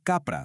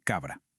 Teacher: las consonantes sordas como la p, la t y la c que estaban entre vocales se suavizaron. Por eso capra se convirtió en cabra.